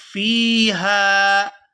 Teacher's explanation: فا کو یا ساکن کے ساتھ ملائیں گے تو کھینچ کر ادا کریں گے، اور آگے ہا کو بھی الف مدہ کی وجہ سے کھینچ کر ادا کیا جائے گا۔